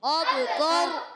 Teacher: را ساکن ہو رہی ہے، اس سے پہلے زبر آ رہا ہے، پر پڑھیں گے